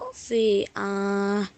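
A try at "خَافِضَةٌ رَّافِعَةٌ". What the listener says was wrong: Rofi'ah. Tidak panjang itu di akhir ayat.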